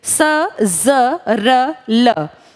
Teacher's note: दांतों की जड़ों से चार बोले जाते हैं। सजरल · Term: दंत मूल